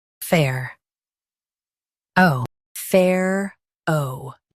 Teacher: Stress fair and keep O clear. Fair. Oh.